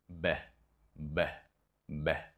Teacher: technique of building up pressure the lips come together B but I allow my vocal cords to relax and to vibrate causing this voiced accent b b b you hear that slight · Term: voiced sound